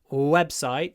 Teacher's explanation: when we have a word which is made up of two nouns web and site the stress is on the first one website so we need a long W and especially considering that